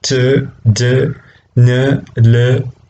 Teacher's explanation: you can see the tongue is touching the teeth ridge